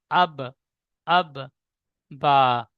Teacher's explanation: দুই ঠোঁটের ভিজা অংশ হতে উচ্চারিত হয় বা